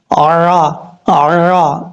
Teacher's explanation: عین کو آپ نے حمزہ کی آواز سے نہیں پڑھنا، عین کی آواز ہی نکالنی ہے، عرا عرا، اس طریقے سے۔